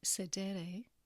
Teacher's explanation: syllables and accent marks show which syllable needs to be emphasized since sedere is a second conjugation verb the penultimate or next to last syllable is emphasized